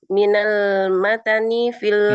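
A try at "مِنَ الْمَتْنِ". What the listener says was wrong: minal matni, taknya disukun minal matni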